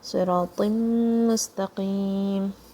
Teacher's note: Siratim, this is going to join with the meme, and you're going to say it with one meme sound.